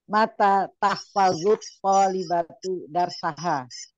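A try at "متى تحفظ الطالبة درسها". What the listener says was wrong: Iya, oke, bagus.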